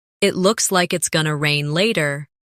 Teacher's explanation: In connected speech, going to becomes gonna.